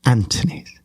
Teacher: she's dropping the last two syllables